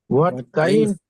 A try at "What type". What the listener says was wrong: হোয়াট টাইপ, হোয়াট টাইপ, T T Y P E, টাইপ। টিটাকে একটু ঠর মতো করে বলেন।